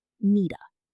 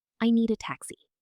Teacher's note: a native speaker connects the D in need directly to the A. It sounds like one word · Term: connected speech